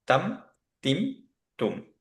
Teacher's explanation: আর আমরা যেহেতু দেখলাম যে বাতাস বের হচ্ছে না, কলকলা নাই, তাওয়াসুদ বা বাইয়িনিয়া, খুব থেমেও থাকবো না, আবার খুব শার্প স্টপ করবো না, তাহলে আমরা পড়বো হচ্ছে তাম, তিম, তুম।